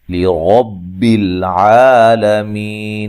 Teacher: را کو موٹا ادا کریں گے، لام کو ہلانا نہیں ہے. عین کو واضح نکالنا ہے اور مد اصلی ہے.